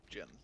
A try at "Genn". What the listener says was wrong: it's Gen, not Jen. It's Gen Greymane. Not Jen Greymane.